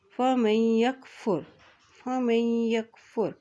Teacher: अब यहाँ देखिए मीम की ज़बर, ये नून साकिन हो गया और मीम की ज़बर को या के साथ मिलाएंगे क्योंकि या के ऊपर शद है